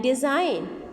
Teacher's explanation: It ends on N and there is no sound of G